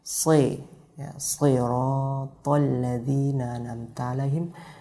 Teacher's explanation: Sodnya yang kasrah dia bukan ke i lagi lafadznya, tapi ke e.